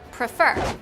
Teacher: You can hear that the second E is stressed, which is the E right before the consonant R at the end of the word.